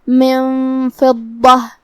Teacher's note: فا حروف الاخفاء میں سے ہے تو ہمیں یہ حکم کو غنہ کے ساتھ ادا کرنا ہے